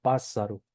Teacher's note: cuando va en sílaba intermedia se pronuncia como una r suave